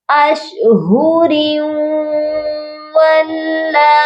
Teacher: یہاں پر ہم نے را کو واو کے ساتھ ملا کر پڑھنا ہے اور غنے کے ساتھ ملانا ہے، یعنی کہ یہاں پر ادغام مع غنہ کا قاعدہ ہو رہا ہے.